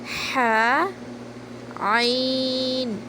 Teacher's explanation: حلق کے درمیانی حصے سے ہا اور عین ادا ہوتے ہیں۔